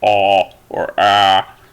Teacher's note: And then your front vowels, or the A might be more of like a low central vowel, but it's really obvious because it's a low vowel. Your mouth is very widely open, so it's ah or ah, something like that.